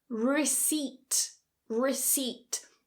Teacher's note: So the p is silent, not receiPt, remove the p.